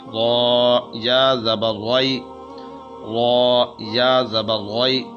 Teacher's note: یہاں پر را ہے، را کو موٹا پڑھا جائے گا، چونکہ را کے اوپر اگر زبر آ جائے تو پھر اس کو پر یعنی موٹا کر کے پڑھا جاتا ہے۔ اب یا ہے، یا سے پہلے جو ہے وہ زبر ہے تو را زبر یا رائی، یہ یا لین ہے، تو اس وقت یہاں پر اس کو لمبا نہیں کیا جائے گا بلکہ اس کو عمومی حالت کے اندر پڑھا جائے گا۔